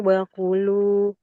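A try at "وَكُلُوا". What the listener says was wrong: Wakulu ulang lagi. Wakulu sampai wakulu aja, Mbak. Ku-nya panjang ya. Wakulu, wakulu, ku-nya panjang.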